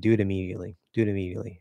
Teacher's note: most likely my lips are going to close and I'm just going to do an M anyway but um they don't necessarily have to fully close do it